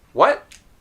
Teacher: Now, did you notice that when I say it naturally, it sounds like, what? Without the T being released. My tongue is still in the position of touching the top of my mouth.